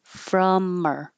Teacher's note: with h deletion, we can get rid of the h from the pronoun and connect the m to the and have from her.